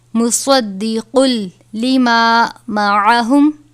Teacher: یہاں پر لام ہے لہٰذا یہاں پر غنہ نہیں ہوگا، ہم اس کو مصدقل پڑھیں گے، مصدقن نہیں پڑھیں گے۔ مصدقل لما معہم، لام ہے، یہاں پر نہیں ٹھہرنا چاہیے۔